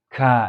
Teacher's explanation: Tapi khusus ka itu keluar angin